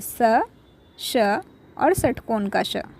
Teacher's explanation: स का उच्चारण दांत से श का उच्चारण तालू से और षटकोण के श का उच्चारण मुर्धा से होता है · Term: उष्म व्यंजन